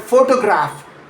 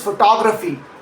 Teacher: In photograph, that middle O is a full clear vowel. In photography, the stress shifts and that same letter O collapses down into a schwah, a quick, almost swallowed a.